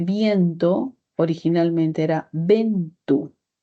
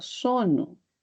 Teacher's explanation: Si hablamos, por ejemplo, de viento, originalmente era ventu. Es decir, de una vocal salieron dos. Entonces es un proceso llamado diptongación porque se convierte en un diptongo.